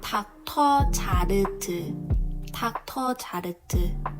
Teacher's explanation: OR is also O, and the R sound is L.